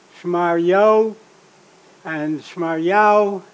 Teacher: the hay has been assimilated to the following vav, creating the diphthong au that did not reduce to o.